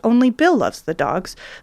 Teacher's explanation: the Bill is actually pitched a little higher